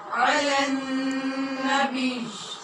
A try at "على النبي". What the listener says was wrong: بیچ نہیں، علی النبی، بی بھی نہیں کہنا، علی النبی. اور اگر ملانا ہے تو پھر علی النبی،